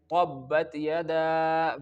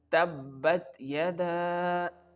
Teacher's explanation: Here you can only pronounce the letter ta with the light sound, not with the thick sound